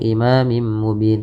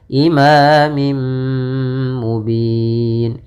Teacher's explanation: Langkahnya adalah memasukkan tanwin kepada mim kemudian digunakan. Imamim mubin, tidak langsung imamim mubin, tapi tahan dulu gunnahnya. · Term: idgham bi gunnah